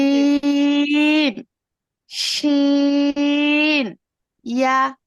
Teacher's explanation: জিহ্বার মধ্যখান হইতে তার বরাবর উপরের তালুর সঙ্গে লাগাইয়া উচ্চারিত হয়। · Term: 6 নম্বর মাখরাজ